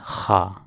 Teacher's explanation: خا حلق کا وہ حصہ جو منہ کی طرف والا ہے وہاں سے خا ادا ہوتا ہے. اور یہ بھی حروف حلقی میں سے.